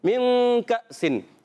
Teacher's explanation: من کأسن, نون ساکن میں کاف حروف اخفا میں سے ہے, تو اخفا کا قاعدہ ہوگا ایک الف کا غنہ کریں گے, نون کو چھپا کر ادا کریں.